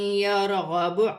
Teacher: را ساکن سے پہلے زبر را موٹی پڑھی جائے گی